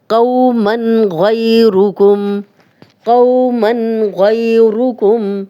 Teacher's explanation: من تنوین آگے غین آ گیا تو ہم غنہ نہیں کرے.